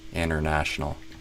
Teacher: deal with international companies, international. Kind of inta instead of inter. Sounds like you dropped the R.